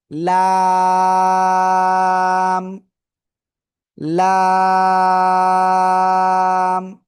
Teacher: উপরের মাড়ি এই সামনের দুইটা না সামনের দুটো বাদে যে এপাশে এপাশে দুই পাশে লাগলে সমস্যা নেই জিব্বার আগার কিনারা উপরে মাড়ির দাঁতের গোড়ার সাথে লাগিয়ে অক্ষটা উচ্চারিত হবে · জিহ্বার আগার কিনারা উপরে মাড়ির দাঁতের গোড়ার সাথে লাগিয়ে এই অক্ষরটা উচ্চারিত হবে চার আলিফটা নিয়া